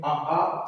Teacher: आ सबसे अंदर कंठ से उच्चरित होता है